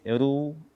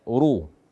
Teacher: membaca ra dhammah dengan tipis